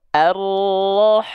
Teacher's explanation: Pastikan sifat hams atau bisikannya jangan sampai terputus, ya. Harus terus mengalir.